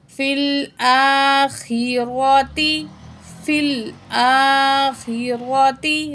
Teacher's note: را کو ہیوی پڑھیں گے زبر کی وجہ سے · لام فل، یا کو اور الف کو نہیں پڑھا جائے گا، حمزہ کے اوپر کھڑا زبر ہے، 1 پوائنٹ کھینچ کے پڑھیں گے ، فی الآخرۃ، فی الآخرۃ، را کو ہیوی پڑھیں گے زبر